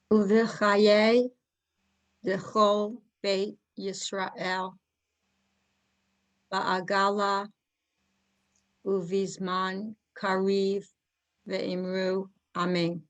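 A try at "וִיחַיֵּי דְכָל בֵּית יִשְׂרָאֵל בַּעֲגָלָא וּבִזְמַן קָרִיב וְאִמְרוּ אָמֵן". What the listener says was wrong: Yes, very good.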